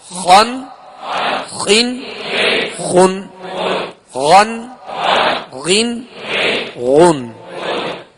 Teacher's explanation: اب یہ دونوں حروف حرف خا اور حرف غین, یہ دونوں حروف پر یعنی موٹا پڑھیں گے ان کو, اس لیے کہ یہ حروف مستعلیہ میں سے ہیں